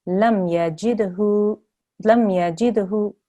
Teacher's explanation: Make sure you don't elongate the hu.